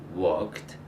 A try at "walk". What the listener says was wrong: Okay, try walk. More drop the jaw. Walk. Walk.